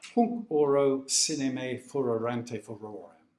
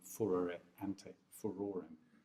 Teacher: He is bringing out the importance of those two R's by doubling them, furore ante furorem. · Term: the two R's